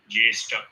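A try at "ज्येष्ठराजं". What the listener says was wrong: It has to be harder. Tha has to be harder. Tha, huh? Tha Raja.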